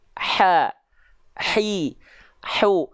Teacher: Yang membedakan antara ain dan ha kecil, itu kalau ha kecil punya sifat yang namanya hams, dia mengalirkan nafas, karakteristiknya nafas yang berbisik.